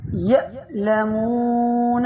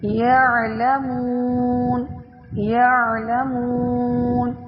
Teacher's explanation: حمزہ اور عین. حمزہ جو سخت اور جھٹکے والی ہوتی ہے، عین نرمی اور بغیر جھٹکے